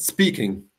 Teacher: speaking has the stress on the second syllable from the end